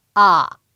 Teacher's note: 삼성의 포인트는요 낮은 음에서 시작해서 더 낮게 지그이 누르는 거거든요 그래서 여러분들이 낼 수 있는 가장 낮은음을 지긋이